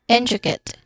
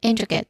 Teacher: For intricate, our stress syllable is in.